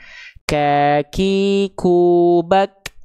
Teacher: huruf kaf itu dari segi nafas perhatikan dia punya sifat namanya terpercik nafas atau percikan nafas.